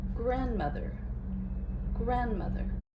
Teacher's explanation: Primary stress is on graph. Secondary stress is on m grandmother.